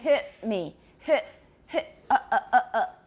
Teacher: it's a glottal stop it's an opening and closing of the vocal folds remember the glottis is the opening there so a glottal stop